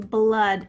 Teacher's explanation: that's a schwa sound made with a double o